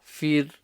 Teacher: So the ghain needs to be clear. The ra is empty mouth because it has a kasra before it.